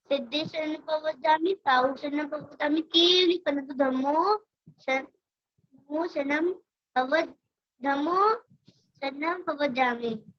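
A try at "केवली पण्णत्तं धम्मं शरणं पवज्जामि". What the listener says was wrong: Last line में ओ का sound नहीं है, का साउंड है। केवली पणत्तम धम्मम शरणम पवव्जामि।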